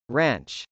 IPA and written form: rˈæntʃ (ranch)